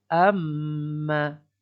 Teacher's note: Dengung 2 harakat. Dia bermula di pangkal hidung ni.